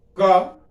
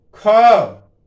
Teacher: जैसे मैंने ख कहा, थोड़ा सा क्या वायु कंठ से ज्यादा निकली तो महाप्राण हो गया ना, यही तो है महाप्राण।